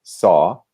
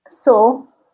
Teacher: So in American English, it's much more open. The mouth is more open, and it's a brighter sound